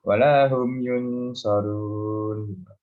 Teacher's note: Yunsarun, yung tebalkan dengungnya. Yunsarun, dengung 3 harakat.